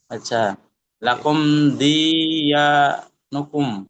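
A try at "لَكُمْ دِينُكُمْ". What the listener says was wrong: ইয়া তো পাবে না, ইয়া তো লিখবেন, ইয়া তো বলবেন না, কারণ ইয়াটা কার সাথে আছে? ইয়া তো দালের সাথে আছে। জি, লাকুম দিনুকুম।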